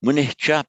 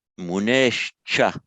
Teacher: So whatever the preceding vowel is, it will always change to the visarga will change to the sha